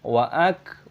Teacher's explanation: panjangkan wawu, ada tanda alif, panjangkan dua ketukan untuk mad thabi'i